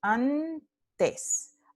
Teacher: este n se pronuncia con el ápice de la lengua que está tocando la parte detrás de los dientes superiores. Mismo punto de articulación de ta. · Solo se mueve cuando deja de tocar la parte detrás de los dientes superiores. Entonces, el punto de articulación de este alófono n es dental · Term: alófono dental